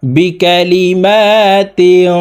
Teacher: এই তানভীন ওয়ালা তাকে নাকের ভিতরে লুকাইয়া গুন্নার সহিত পড়তে হবে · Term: ইকফা গুন্না